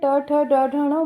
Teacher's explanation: स्पर्श व्यंजन ये कंठ, तालु, मूर्धा, दंत और ओष्ठ स्थानों के स्पर्श से बोले जाते हैं।